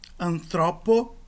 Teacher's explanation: o acento teve de avançar, porque a vogal da última sílaba é uma vogal longa, é um ômega.